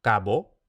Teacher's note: lo primero que tenemos a partir de esta forma capo es la sonorización de oclusivas intervocálica